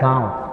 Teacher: इसकी ध्वनि नाक के साथ-साथ मुंह से भी निकलती है। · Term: चंद्रबिंदु